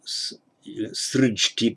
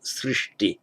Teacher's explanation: the j changes to a sh before a t, so you get srijti becomes srishti as the verbal noun with the t.